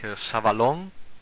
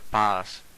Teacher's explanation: It is read voiceless S at the start and or at the end of the word, like savalon, that means sand, or like pas, that means peace.